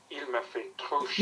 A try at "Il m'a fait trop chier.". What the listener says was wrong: You're not pissed off. There's no air coming out of your mouth. If you were annoyed, there'd be air.